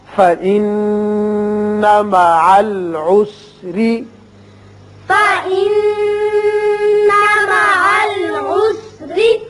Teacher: ذکرک، ذکرک، فإن مع العسر، فإن مع العسر، نون مشدد ہے، غنہ کریں گے اور یہاں را کے نیچے زیر ہے، را باریک پڑا جائے گا